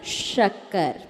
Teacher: तालव्य सा जिसमें आपकी जीभ ऊपर तालु को टच करे, शक्कर। शक्कर नहीं बोलते, क्या शक्कर, शक्कर में दंती सा बोल दिया, शक्कर।